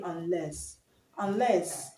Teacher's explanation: un in unless is a prefix, so we're not going to stress it. So the stress is on the second level.